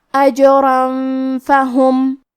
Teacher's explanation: کلمت فہم، فا حروف الاخفاء میں سے ہے اور اخفاء کا معنی ہے چھپا دینا، تو ہم یہ تنوین کو چھپاتے ہوئے لیکن غنہ کے ساتھ یہ حکم کو ادا کریں گے